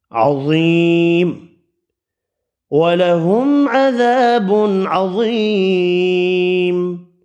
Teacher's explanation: عذاب عظیم، ضا پر پڑھیں گے، یا مدہ کو ایک الف کی مقدار میں کھینچ کر پڑھنا ہے، میم ساکن پڑھیں گے وقف کی صورت میں، اور غنے کی آواز نہیں پیدا کرنی میم میں